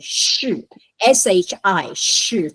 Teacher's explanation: it's called retroflex means your tongue goes backwards